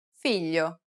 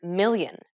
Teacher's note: produce this sound by saying the english word million try it try to think of it as pronouncing a regular english l but instead of using the tip of your tongue try to use the blade or the middle part of your tongue